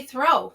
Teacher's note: lip rounding for that vowel o at the end of the word throw